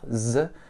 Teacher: On utilise bien les cordes vocales pour prononcer un Z. Tu peux mettre ta main sur la gorge pour le sentir. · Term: consonne voisée